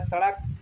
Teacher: सड़क और ढ हमारा बनता है पढ़ना। मैकेनिक्स उच्चारण में जीभ पहले ऊपर उठकर मूर्धा को छूती है। फिर झटके से नीचे आती है। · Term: उत्क्षिप्त द्विगुण व्यंजन